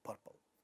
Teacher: at the initial position of the second syllable which is not stressed is not getting aspirated so it remains as purple this is how these we have